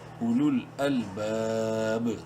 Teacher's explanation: با چونکہ حروف قلقلہ میں سے ہے اور ساکن ہونے کی صورت میں اس پر قلقلہ ہوگا۔